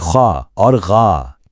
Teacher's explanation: गले से निकलने वाले हल्की हरूफ जैसे ख और ग।